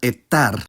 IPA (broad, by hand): eˈtːar